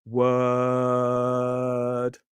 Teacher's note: The sound is created in the center of the mouth. It's not pulling forward, it's not pulling back